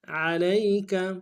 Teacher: لیس، لام کو یا کے ساتھ ملانا ہے، سین کی سیدھی باریک ہوگی۔ لیس علیک، عین کو گہرائی سے ادا کریں گے، لام کو یا کے ساتھ ملانا ہے، یا لین بغیر کھینچے پڑھیں گے، کاف کو نون سے ادا کریں گے۔